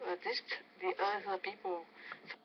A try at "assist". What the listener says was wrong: I think you want to say the ability to assist. 2 syllables. The ability to assist other people, but you're only using 1 syllable there, not 2.